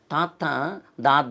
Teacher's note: త ని నాలుకని ఆ పైన దంతాలని తన్ని ఎత్తేస్తాం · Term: దంత్యాలు